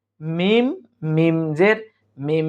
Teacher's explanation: এখন নুনটা বাদ গিয়ে এখন পড়তে হবে মিম মিম জের মিম একটু গুন্না করবো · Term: ইকলাব